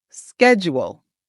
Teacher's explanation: in American English, we pronounce it with the sk, as in schedule. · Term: the SK sound